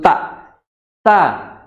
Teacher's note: Punggung ujung lidah bertemu dengan pangkal dari gigi seri yang atas. · seri atas atau tempat tumbuhnya gigi seri ya ujung lidah dan yang lebih tepatnya adalah punggung ujung lidah ya Punggung ujung lidah bertemu dengan pangkal dari Gigi Sari yang atas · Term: huruf ta